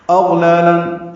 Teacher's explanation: حمزہ اقصی حلق سے نکالیں گے، غین ادنی حلق سے نکالیں گے اور غین پر پڑھیں گے اور اس پہ اظہار ہوگا.